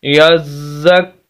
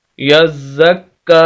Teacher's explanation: या को हम ज़ा के साथ मिलाएंगे क्योंकि ये ज़ा के ऊपर शद है। और पहले ये बताया जा चुका है कि शद वाले लफ्ज़ को हम 2 मरतबा पढ़ते हैं।